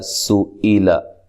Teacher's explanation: سئیلا حمزہ کو تحقیق سے پڑھنا ہے، سین کو باریک سیٹی سے، لمبا نہیں کرنا کسی کو بھی، لام کو موٹا بھی نہیں کرنا